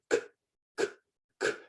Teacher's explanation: if I put my hand on my throat when I say the K sound, I don't feel vibration. I don't feel the vocal cords moving.